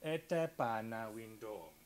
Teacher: Vous avez ici des mots prosodiques à ton bas qui ont au moins 4 morts chacun, donc propagation du ton bas, nous avons nos deux pieds, notre colon, l'abaissement du registre, donc quelque chose comme ete pana window, avec cette intonation en escalier descendant